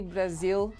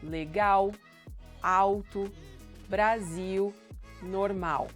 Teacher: You shouldn't say legal. L at the end of words or before a consonant will sound like W.